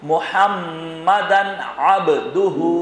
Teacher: محمدن میں غنہ نہیں ہوگا اس لیے کہ عین سامنے موجود ہے